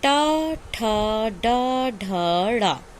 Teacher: टा वर्ग का उच्चारण स्थान है मूर्धा, इसको हम मूर्धन्य भी कहते हैं।